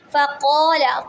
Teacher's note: قاف حروف مستعلیہ ہے، اس کو پر پڑھیں گے